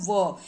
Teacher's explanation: व जिसमें दांत का भी यूज हो रहा है, होठ का भी यूज हो रहा है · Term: दंत्योष्ठ